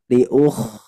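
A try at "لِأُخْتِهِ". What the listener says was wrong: Nah, itu masih kurang kuat. Liuhtihi Kh-nya masih PR Bu ya.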